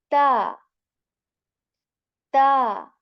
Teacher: the tip of the tongue we touch that to the root of our upper front two teeth with strength the first point is with strength okay and the second thing